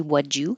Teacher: The D and the Y make a J, so you can say would you.